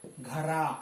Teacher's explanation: रॉ के उच्चारण होने के साथ ही रॉ आएगा, लेकिन उसमें रिदम हो जाएगा, उसमें थरथराहट उत्पन्न हो जाएगी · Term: बड़ा रॉ